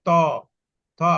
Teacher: এগুলো বলতে গেলে দাঁতটা লাগে, দন্ত বলে এটাকে, অর্থাৎ দাঁতটাকে টাচ করতে হয়। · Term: দন্ত ধ্বনি